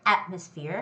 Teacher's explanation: the word atmosphere has the first syllable stress